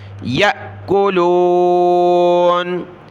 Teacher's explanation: حمزہ ساکنہ ہے، یہاں جھٹکا دے کر پڑھنا ہے